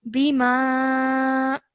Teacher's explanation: This ba, it has a simple kasra, so do not elongate for more than 1 second.